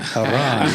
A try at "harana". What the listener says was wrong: No, you gotta roll your R's, bro.